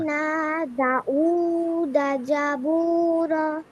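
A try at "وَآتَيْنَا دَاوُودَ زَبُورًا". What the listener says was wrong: এখন আবার আরেকটা ছেড়ে দিছে দা, দা টান দেয় নাই না। হ্যাঁ, দা টান হবে, দা একালিপ টান, উ একালিপ টান, দা উ, দা জাবুর, ওয়া আতাইনা দাউদ জাবুর।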